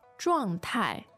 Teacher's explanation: Also two fourth tones.